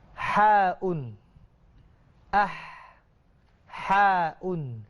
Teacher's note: Ha ini huruf halqiyah lah, huruf halqum. Jadi dia ini ada angin. Sebelum nak sebut tu keluar angin dulu. Bukan lepas sebut keluar angin.